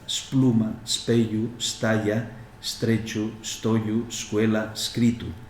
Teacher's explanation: se registra la pérdida de la E de manera que se vuelve a una S líquida